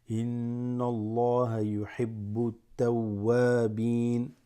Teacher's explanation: And then you go here, this drops, alif lam drops, go straight to the ta, because the ta has a shadda there